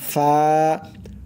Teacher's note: 14 নম্বর মাখরাজ হচ্ছে নিচের ঠোঁটের পেট। নিচের ঠোঁটের পেট সামনের উপরের দুই দাঁতের আগার সঙ্গে লাগাইয়া একটি অক্ষর উচ্চারণ হয়